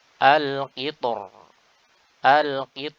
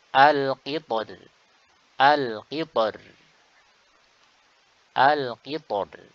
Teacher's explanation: Al-Qitari dibaca dengan dua cara ketika waqaf. Cara pertama adalah dengan menebalkan ro. Cara kedua dengan menipiskan ro di sini. Cara pertama adalah kita baca ketika waqaf al-qitor, al-qitor.